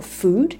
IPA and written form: fuːd (food)